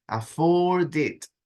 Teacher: Y luego afford termina también en D. Entonces esa D se conecta con la I.